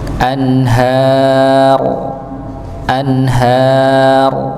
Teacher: rnya sukun. Iya. sebelumnya fathah maka rnya ditebalkan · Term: ra-nya ditebalkan